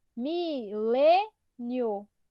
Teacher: milênio a sílaba mais forte é o lê que é que é a penúltima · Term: penúltima sílaba